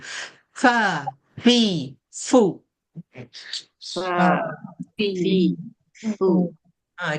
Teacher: fa ni makhraj dia gigi atas kena dengan perut bibir bawah ya macam rabbit gitu fa fi fu fa fi fu dia ada sifat berangin ya ada hamas dia tu kena angin bunyikan angin dia tu.